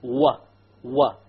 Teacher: the wow occurs when you join the two lips together but you don't make them touch